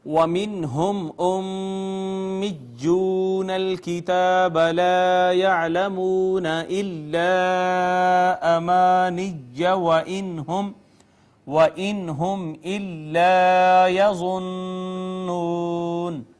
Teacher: میم ساکن پہ اظہار شفوی، میم مشدد پہ غنہ، واو مدہ ہے، اس کے بعد الف المدیہ الصغیرہ، پھر الف المدہ ہے، پھر واو مدہ ہے، پھر مد منفصل ہے، پھر الف مدہ، پھر نون ساکن پہ اظہار، میم ساکن پہ اظہار شفوی، الف مدہ، نون مشدد پر غنہ اور واو مدہ۔